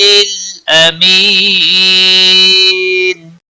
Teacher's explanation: امی یا مدہ ہے، 1 الف کے برابر کھینچ کر پڑھیں گے۔ نون وقف کی صورت میں ساکن ہوگا تو 3 سے 5 الف کے برابر کھینچ کر وقف کریں گے، وقف بالاسکان بھی ہوگا۔